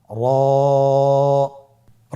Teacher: জিহ্বার আগার উল্টা পিঠ তার বরাবর উপরে তালের সঙ্গে লাগিয়ে উচ্চারিত হয় · র হরফটি এখানে আমরা পর উচ্চারণ করব। মোটা করে উচ্চারণ করব। এবং র হরফটি এক আলিফ টেনে পড়ব।